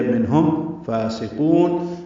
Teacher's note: فا کو دو حرکات لمبا کرنا ہے، کھڑا زبر ہونے کی وجہ سے. سین باریک، قاف پر واو مدہ ہے اور نون ساکن پہ وقف اظہار ہوگا، لمبا کریں گے قاف کو. · ہا اقصی حلق سے ادا ہوگا